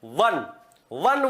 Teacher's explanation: वन बोलने में नीचे का होठ और ऊपर के दांत सटते हैं · नीचे के होठ और ऊपर के दांतों के सटने से व बोला जाता है